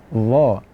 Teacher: Makhrajnya adalah ujung lidah berjumpa dengan ujung gigi atas. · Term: makhraj dha